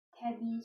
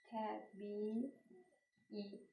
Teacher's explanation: İ'nin biri düşür, biri isə uzun tələffüz olunur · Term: Qoşa İ